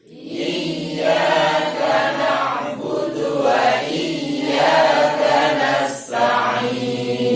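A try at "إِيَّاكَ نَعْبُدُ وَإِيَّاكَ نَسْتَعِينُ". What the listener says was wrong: Iya, perhatikan iyanya ditekan, bukan dipanjangkan. Seringkali bukan iyyaka, tadi menjadi begini. Itu iyanya panjang. Iya, padahal bukan iya sukun tapi tasdid.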